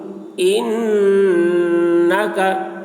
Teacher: نون مشدد ہے، نون میں غنہ ہوگا